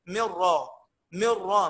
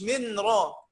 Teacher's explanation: الراء واللام بعد النون الساكنه والتنوين ندغمها بغير غنه